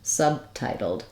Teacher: I have to close my lips for the B, and then just release the air and the sound on the T sound, subtitled, which is why this T is an aspirated T.